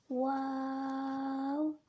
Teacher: واو کو 3 الف کے بقدر کھینچ کر پڑھیں گے، جیسے واو۔ ہا کو 1 الف کے بقدر کھینچ کر پڑھیں گے، جیسے ہا۔